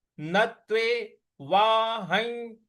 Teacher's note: न के बाद जो आधा त है इस पर हमको आघात देना है। न त्वे वाहं, ह के ऊपर जो अनुस्वार है उसका उच्चारण इया ले आना है।